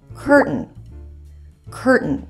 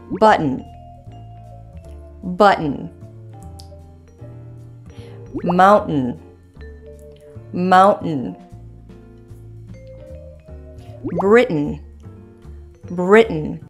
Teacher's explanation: sure you hold the T for example when pronouncing curtain curtain hold the t as in Cur and then add an N